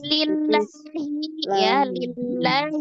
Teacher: ada alif lam jalalah sebelumnya kasrah, dibacanya tipis